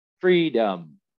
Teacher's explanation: But for poetry, and especially English language poetry, it's important to be aware of where the stress is, right? So in the word freedom, we have to be aware and understand that the stress is on the first syllable, free, right? It's freedom, not freedom.